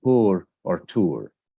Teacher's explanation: Instead of the diphthong, the vowel can be elongated, and then there would be the R sound, as in pur or tur. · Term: vowel elongation